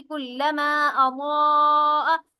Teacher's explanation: بڑی مد ہوگی یہاں پر جو کہ 4 سے 6 الف کے برابر کھینچی جاتی ہے